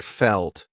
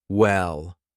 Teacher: dark L's come before a consonant like felt, or at the end of a word like well. We do a light L before a vowel like Laura or hello.